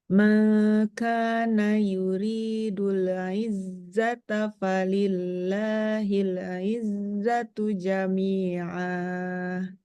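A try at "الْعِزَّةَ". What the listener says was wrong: Nah, huruf ainnya jangan sampai hilang. Maksudnya jangan kayak apa ya? Jangan tenggelam. Dia keluar daripada tengah tenggorokan. Nah, jadi harus ada suara A-nya itu. Yuridul izzata, jangan yuridul gimana tadi? Izzata.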